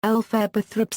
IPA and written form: ˈɛlfəbə ˈθrɒp (Elphaba Thropp)